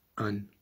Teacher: So for the word an, which means a tongue, you pronounce the click, and there's a small glottal stop in between the an and the click.